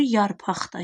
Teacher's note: Burda q x kimi tələffüz olunacaq.